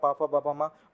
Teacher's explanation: बा कहाँ से ध्वनि निकलती है, बा बोलते समय पा फा बा मा, पा वर्ग हमारा होठ से निकलता है, यानी ओष्ठ ध्वनि है